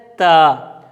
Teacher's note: تا آپ نے اس انداز سے ادا کرنا ہے کہ آپ کی زبان کی نوک سامنے والے جو دو دانت ہیں اس کے کنارے کو لگے، یعنی اوپر جو مسوڑا ہے اس سے نیچے تھوڑا سا کر کے جو کنارہ ہے اس کے ساتھ جب لگے تو تا ادا ہوتا ہے.